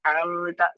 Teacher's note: gunahnya tetap ada tetapi tidak sampai dia ee mendengung panjang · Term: gunah yang lebih sedikit